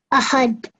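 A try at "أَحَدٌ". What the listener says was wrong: Try and take your tongue off the top of your mouth, okay? Ahad.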